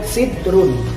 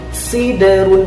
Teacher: Huruf da sukunnya memantul. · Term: qalqalah